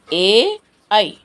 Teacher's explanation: అక్షరాలకి మనకి కంఠం అవసరం కంఠం సహాయం కావాలి దవడల సహాయం కావాలి కాబట్టి కంఠం మరియు దవడల నుండి పుట్టినవి అని చెప్పుకుంటాం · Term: కంఠ తాలవ్యాలు